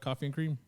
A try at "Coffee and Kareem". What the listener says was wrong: You said cream. Kareem. There's 2 syllables, not cream. Not just one. 2 syllables. Kareem. Kareem. Coffee and Kareem.